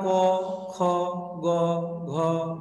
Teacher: ক, খ, গ, ঘ, ঙ, এইগুলি উচ্চারণ হয় কণ্ঠ থেকে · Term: কণ্ঠ ধ্বনি